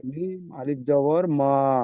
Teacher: একটু টান দেন, একালিফ পরিমাণ টান হবে।